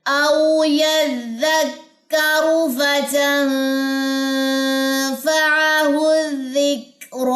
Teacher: را کے اوپر کھڑا زبر ہے تو یہ ہمارے پاس جو ہے یہ 2 سیکنڈ کے حساب سے یہ لمبی پڑی جاتی ہے